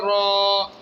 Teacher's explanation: را کو موٹا بھی کرنا ہے اور ایک الف کی مقدار میں کھینچنا ہے